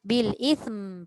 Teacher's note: Pastikan tu pastikan bukan sin Pastikan hujung lidah keluar. Bil bil tu kena bunyi. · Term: huruf tha